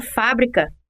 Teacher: na palavra fábrica que é proparoxítona a sílaba tônica fa é a terceira embora seja essa sílaba a primeira a ser falada e escrita